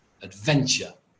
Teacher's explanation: And actually it's got two schwas, one on the first syllable and one on the last syllable. Why? Because the stress is on the second syllable, adventure.